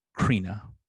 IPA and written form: ˈkɻinə (Corinna)